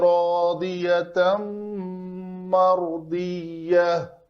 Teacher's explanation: تا مربوطہ ہے، گول تا ہے، وقف کرنا، اس کو ہائے ساکنہ بنا کر وقف کریں گے۔